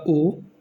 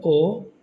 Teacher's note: और नेक्स्ट है हमारा पश्च स्वर। तो ये वो स्वर होते हैं जो कि जीभ के पिछले हिस्से से बोले जा रहे होते हैं